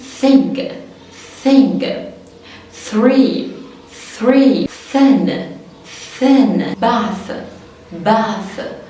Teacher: مفيش اصلا صوت اهو، ده مجرد شويه ايه؟ هوا. · يبقى هنا ال TH كانت ايه؟ soft TH ناعمة أو voiceless.